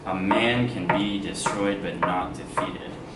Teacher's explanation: It's iambic, right? Because it goes unstressed, stressed.